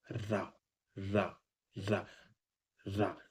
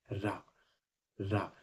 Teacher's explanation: तो क्या होता है ना इसमें, जब रा बोलते हैं ना तो ध्वनि जो है ना वो जीभ को लुढ़का के आती है, इसलिए इसको रा को लुंठित व्यंजन भी बोलते हैं।